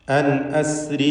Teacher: ഔഹൈന അൻ അസ്രി, സാക്കിനത്തായ നൂനും ശേഷം ഹംസയുമാണ്. ഇൽഹാർ ഹൽക്കി നൽകി നൂനിനെ മണിക്കാതെ വെളിവാക്കണം.